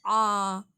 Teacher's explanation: ரொம்ப மெல்லிசாக தொண்டையிலேருந்து சொல்லணும்